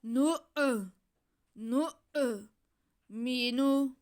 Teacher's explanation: میم کے نیچے زیر اور نون پہ پیش، ان کو کھینچنا نہیں ہے